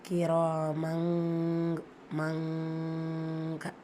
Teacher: தன்வீன் இருக்கு தன்வீனை தொடர்ந்து அடுத்த லெட்டர் கேப் இது இஃப்பா உடைய சட்டம் தன்வீன்ல இருக்கிற நூனை பாதியா மறைச்சிட்டு ஒன்னா செஞ்சு ஓதணும்